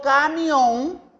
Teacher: terminan en s por ejemplo yo digo camión lleva acento ortográfico lleva la sílaba tónica en la última sílaba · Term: palabra aguda